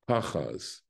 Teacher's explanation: And notice that the vowels underneath, this is a patach, and this is exactly the same one. This is a patach. It's a short vowel, and it's an ah sound, as you could hear.